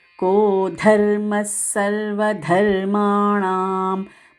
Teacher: ఉన్న రెండు ధకారాలు మహా ప్రాణాక్షరాలు కో ధర్మస్ విసర్గ ఉచ్చారణ సకారము సర్వ ధర్మాణాం మ ణ రెండు దీర్ఘాక్షరాలు